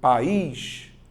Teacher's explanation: vogal mais vogal só que em sílabas diferentes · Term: hiato